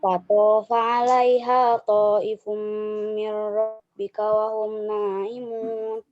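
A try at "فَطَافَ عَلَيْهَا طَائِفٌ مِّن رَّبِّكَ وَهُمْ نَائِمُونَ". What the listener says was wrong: Nah, ini kenapa ya tanggung-tanggung panjangnya? Padahal 5 harokat itu lumayan panjang ya. Fatofa alaiha 5 harokat ya. Jadi jangan tanggung-tanggung, panjang aja.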